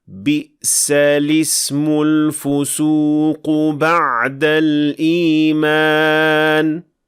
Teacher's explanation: So we pronounce neither hamzat al-wasl in this case. We also notice that the lam has kasra under it, and this happens because of the phenomenon of iltiqa'u sakinain, or the two consecutive consonants.